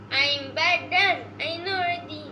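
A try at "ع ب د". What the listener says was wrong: No, your pronunciation is wrong. Listen to me. Ain. Ain pronounced from the middle part of the throat like this.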